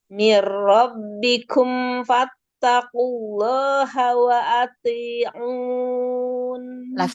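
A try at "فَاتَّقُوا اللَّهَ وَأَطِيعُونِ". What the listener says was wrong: Lafzul jalalanya ditebalkan lagi. Fattaqullaha wa ati'un. To-nya tebal kan?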